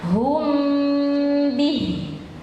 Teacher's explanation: Ikhfa syafawi, mim sukun bertemu dengan ba